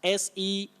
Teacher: servant, with the long mid-central sound